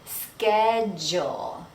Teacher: The CH sounds like a K, ske, and then the DU sounds like jewel